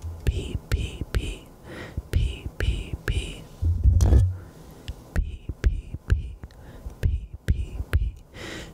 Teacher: do you hear the difference between the p's the plosive sound there's a lot of air coming out of your mouth